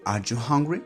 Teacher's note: the second tone it's the up tone it's are you hungry it's up at the end